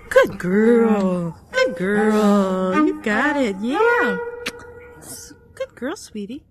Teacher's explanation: the melody was a kind of a rise-fall.